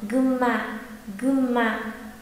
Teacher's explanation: nghe kỹ sẽ thấy nó đọc thành âm M chứ không đọc thành N · Tuy nhiên ý, người Nhật người ta lại đọc lái chữ này, bởi vì chữ ừn đứng trước hàng ma, đứng trước chữ cái ma nên người ta đọc thành gân ma, gân ma, tức là biến chữ ừn thành chữ m ấy ạ